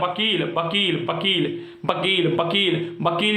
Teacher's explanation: इसलिए इसके दो उच्चारण स्थान होते हैं, कन दंत धन ओष्ठ। दांत और ओष्ठ की सहायता से वकील बोला जाता है। वकील, वकील, वकील, वकील, वकील, वकील जब बोलोगे तो जीभ दांतों में करे होंठ मिल रहे, ठीक है। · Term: दंतोष्ठम